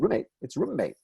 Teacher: you do hear the doubling when you join two words together the one of which ends with a sound that the next